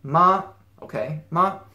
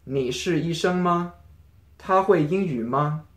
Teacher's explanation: and it doesn't it's not as enunciated as ma for one it's a neutral tone so it should be pronounced very quickly and without any stress on the tone